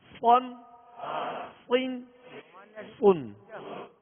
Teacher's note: 2 زبر اور 2 زیر میں ہونٹوں کو گول بھی نہیں کریں گے، اور اس کو پر بھی پڑھنا ہے، موٹا بھی پڑھنا ہے